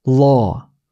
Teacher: 우리말 O와 어의 중간 발음이에요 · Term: Open O